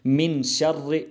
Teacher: یہ جو را مشدد ہے اس کے نیچے زیر آئی ہے تو اس را کو باریک پڑھا جائے گا